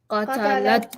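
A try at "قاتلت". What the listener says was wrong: Qatalat. If you don't make the qa part long and say qatalat, actually means she murdered. But qatalat means she fought.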